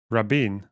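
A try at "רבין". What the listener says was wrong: you don't stress the e. it's Rabin.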